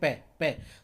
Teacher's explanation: तो पै जब बोलेंगे तो दोनों होठ हमारे आपस में टकराएंगे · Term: ओष्ठ वर्ण